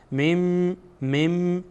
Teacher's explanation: آمده و با از حرف حرف اقلاب هست اقلاب میشه یعنی نون ساکن به میم تبدیل میشه